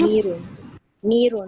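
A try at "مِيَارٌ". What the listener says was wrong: Oh, no, not mirun. Miyarun. Miyarun, right. The ya, the Hamza will change into a ya. And the fatha on the ya will remain. And then the ra as it is. So that becomes miyarun. Sorry, miyarun.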